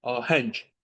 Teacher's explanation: Ahəng. Bu da eyni qaydada. vurğu sonuncu hecadadır.